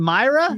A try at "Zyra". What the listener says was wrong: No, it sounds like Myra, but with the Z. Zyra.